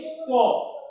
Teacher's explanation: তাহলে দেখো ক যখন আমরা উচ্চারণ করি ক, তখন কিন্তু আমাদের কণ্ঠে মুখ বিবরের একটা জায়গায় কিন্তু লেগে যায়। ক একটা জায়গায় আটকে যায় বা লেগে যায়। অর্থাৎ ফুসফুস চালিত বাতাসটা একবারে বের হয়নি, কোথাও বাধা পেয়েছে। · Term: ব্যঞ্জন ধ্বনি